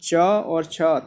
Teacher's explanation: उसके बाद देखिए, च और छ वर्ण का उच्चारण स्थान कौन सा है, तालु। च और छ तालु से बोले जाते हैं, तालब कहलाते हैं